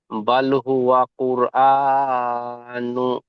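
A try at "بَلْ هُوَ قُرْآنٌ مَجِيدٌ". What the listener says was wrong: নুন হবে না, নুনটি মিমের সাথে যুক্ত হবে। নুন মিম দু পেশ নুম।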